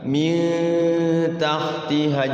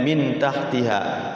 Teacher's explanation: Nun sukun bertemu ta. Harus disamarkan, dengungkan 2 ketukan atau 3 ketukan.